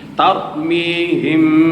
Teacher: Ababil mad arid lis sukun. Tarmihim, ra mati dengan baris atas, tar tebal dipanggil tafkhim.